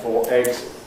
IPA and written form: ˈfɔː ˈegz (four eggs)